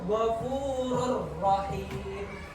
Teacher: Jadi langsung masuk tanpa didengungkan. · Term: idgham bila gunnah